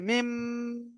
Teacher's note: মুখটা চেপে গুনা করতে হবে